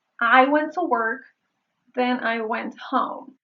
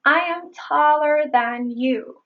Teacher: Then se pronuncia con el fonema | e | en el medio y than tiene el fonema | æ | en el medio